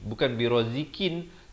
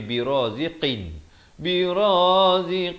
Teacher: Qaf makhrajnya di pangkal lidah.